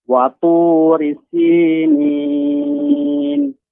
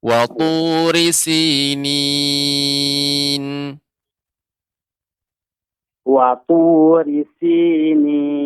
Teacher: ri-nya tidak dibaca panjang